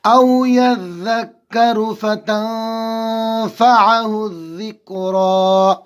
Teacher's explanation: ذال نرمی کے ساتھ نکالیں گے، زبان کی نوک اور اوپر کی دانتوں کا کنارہ